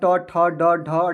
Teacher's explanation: और ट वर्ग का जो उच्चारण स्थान होता है वह क्या होता है, तो मूर्धा होता है।